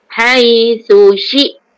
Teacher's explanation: Sa sebelahnya shin. Mula-mula keluar lidah, lepas tu berdesir shin.